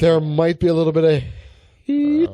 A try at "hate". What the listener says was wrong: There's hate. Oh, hate. Hate.